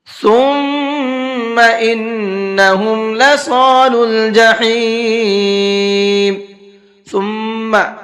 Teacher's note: اس میم کے اندر بھی غنہ کریں گے اس لیے میم کے اوپر تشدید ہے